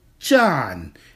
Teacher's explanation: that is a third tone character that is to say it is a falling tone and rising tone